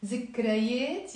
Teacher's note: Notice I wrote it with the that, but I'm pronouncing it as a Z in the Lebanese accent.